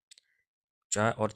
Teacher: चा और छ का उच्चारण स्थान क्या है? तो इनका होगा तालु